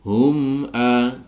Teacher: dibaca idhar syafawi mim sukun bertemu dengan hamzah dibaca jelas.